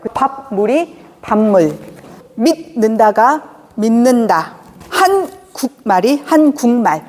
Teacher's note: 같은 조음 위치에서 비음 앞에서는 비음으로 변하는 겁니다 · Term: 비음화